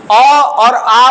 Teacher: अ और आ का उच्चारण कहां से हो रहा है तो इसका उच्चारण होगा कंठ से